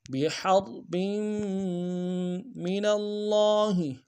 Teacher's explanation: بحرب میں ہا کو را کے ساتھ ملانا ہے، ہا کو گہرائی سے ادا کریں گے، را کو موٹا ادا کریں گے، اور با کے آگے تنوین کو میم کے ساتھ ملانا ہے، میم کے اوپر تشدید زور دیں گے۔